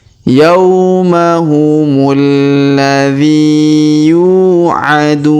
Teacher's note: Kemudian huruf du kita panjangkan 2, 4 atau 6 harokat ya, karena terdapat waw sukun sebelum huruf pemberhentian. Dan huruf pemberhentian, huruf na kita sukunkan atau kita matikan.